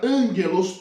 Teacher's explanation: vai ser uma aspiração branda, não vai ter o som forte de H